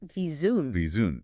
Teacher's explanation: Make sure your bottom lip touches your top teeth and vibrates. And that middle sound, the C, it's not an is sound, it's a ZH sound, like the is in measure or pleasure.